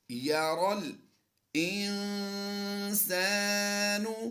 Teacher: یہاں پر نون ساکن کے بعد ہم غنہ کر رہے ہیں